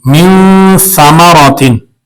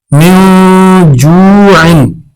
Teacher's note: غنہ ہوگا، آواز ناک میں جائے گی۔ من ثمراتن، سا آ جائے گی نون ساکن کے بعد تو یہاں پر بھی ہم غنہ کریں گے۔